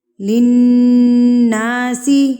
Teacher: غنہ کہتے ہیں ناک میں آواز کو لے کر جانا. ایک حرکت کے برابر آپ نے نون کی آواز کو ناک میں ٹھہرا کر رکھنا ہے